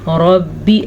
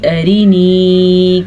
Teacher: یہ را ہم نے پر پڑھی ہے کیونکہ را پہ زبر ہے، جبکہ یہ را ہم نے باریک پڑھی ہے، اس را کے نیچے زیر ہے۔